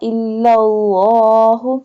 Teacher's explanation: pronounce the bold lam because here is the standing fatha is on the lam